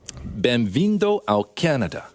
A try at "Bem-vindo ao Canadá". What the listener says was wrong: Yeah, so Canada, there's a tricky thing because in English, the stress syllable, it's Canada. Now in Portuguese, when you say Canada, the stress syllable is da. So it's Canada.